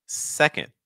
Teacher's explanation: Your stress is on the first syllable. So that means that what you need to do is you need your first syllable to go a little higher in pitch. You need your second syllable to go a little lower.